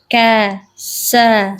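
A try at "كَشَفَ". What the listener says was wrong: Shin Bu, shin. Bukan sa. Sya.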